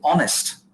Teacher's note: So when you say honest, you're not pronouncing the H. The H is kept silent. You're actually skipping H and you're starting from O and you say honest and not honest, right?